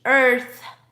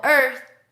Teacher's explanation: And of course you have the TH. Earth. Just let some air go. Earth. First you say and then you finish with earth.